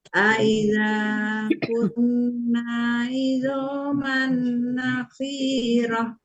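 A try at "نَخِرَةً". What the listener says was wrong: Nakhirah biasa Bu. Nakhirahnya nggak ada yang panjang, nakhirah aja.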